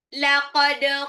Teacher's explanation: Laqad dalnya ini pantul qalqalah sugro